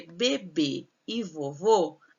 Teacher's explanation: Porque bebê e vovô, a sílaba tônica é a última e elas têm acento circunflexo.